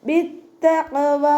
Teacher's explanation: വാവിൻ്റെ കൂടെ അലിഫ് മക്സൂറ വന്നു. 2 ഹർഫുകൾ 2 കൗണ്ട് നീട്ടി കൊടുത്തിട്ട് നിർത്തി കൊടുക്കുക കേട്ടോ. · അപ്പോൾ തഫ്ഹീം ചെയ്യും വേണം. പിന്നെ കൽക്കലയുടെ ലെറ്റർ ആയതുകൊണ്ട് നമ്മൾ ഫുൾ സുക്കൂന് കൊടുത്തിട്ട് ഉച്ചരിക്കുക.